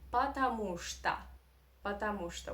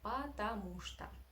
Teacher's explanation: That's why, no, the stress is on the syllable with U, потому что, right? That's why all these three O are in unstressed position and you must pronounce them as A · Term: Russian reduction